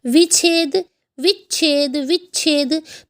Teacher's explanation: तो आधे च की ध्वनि बीच में ऐड ऑन हो जाती है